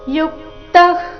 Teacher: ಯು ಮೇಲೆ ಆಘಾತ ಬರಬೇಕು ವಿಸರ್ಗದ ಉಚ್ಚಾರಣೆ ಅರ್ಧಕ ರೀತಿ ಬರಬೇಕು